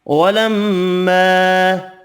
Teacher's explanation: میم مشدد پر غنہ کریں گے، الف مدہ ایک الف کی مقدار میں کھینچ کر پڑھیں گے۔